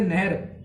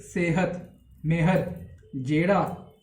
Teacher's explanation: ਨਹਿਰ ਜਦ ਆਪਾਂ ਬੋਲਦੇ ਹਾਂ ਤਾਂ ਈ ਦੀ ਜਿਹੜੀ ਆਵਾਜ਼ ਹੈ ਉਹ ਵੱਡੀ ਆਵਾਜ਼ ਆਉਂਦੀ ਹੈ, ਉਹ ਏ ਪਲੱਸ ਈ ਦੀ ਆਵਾਜ਼ ਆਉਂਦੀ ਹੈ